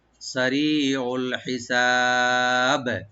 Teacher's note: সারি ওল, আইনটাকে রাইট দিবেন, হিসাব, হাটাকে রাইট দিবেন, সিনটাকে ওপেন করে এখানে টানবেন, আর বা এখানে সাকিন হয়ে যাবে এবং কলকলা করে আমরা এখানে ওয়াক্ফ করব। সারিউল হিসাব, এইভাবে।